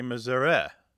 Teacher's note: It goes from either some value of a short or a long i to becoming a schwa.